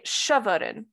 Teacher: contains a light vowel you see chavaren with initial stress so despite the fact that there is a weak vowel and a simplex onset you do see stress on that first syllable because of the prefix which has this property that it is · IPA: ʃə.vər.in